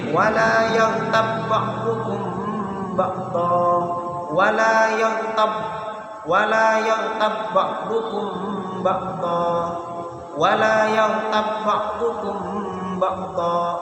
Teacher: Ba mati bertemu dengan ba hidup sama seperti idrib yang awal, maka ditasydid, diidghamkan. · idgham mutamatsilain itu hanya diidghamkan, tidak boleh didengungkan.